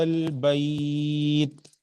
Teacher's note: کھینچ رہا ہوں 4 حرکات کے برابر، یہاں مد لین عارض ہوگا